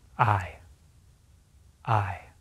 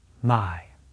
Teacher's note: To make the vowel sound, our lips must be open and not rounded. They move a bit when making the vowel sound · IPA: /aɪ/